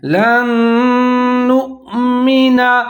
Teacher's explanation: تو نون ساکن اور نون دونوں ملا کے پڑھیں گے اور یہاں پر ادغام کریں گے، 3 سے 4 سیکنڈ تک غنہ کریں گے، آواز کو ناک میں لے جائیں گے